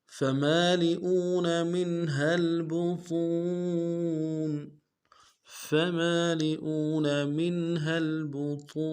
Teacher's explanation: فمالئون منها البطون فمالئون منها البطون فشاربون عليه من الحميم فمالئون منها البطون فمالئون میں نیم کے ساتھ الف مدہ ہے۔ الف مدہ کو ایک الف دال میں کھینچیں گے، لام کو نرم سے ادا کریں گے، حمزہ کو نرم سے ادا کرتے واو کے ساتھ ملانا ہے، واو مدہ ایک الف دال میں کھینچیں گے۔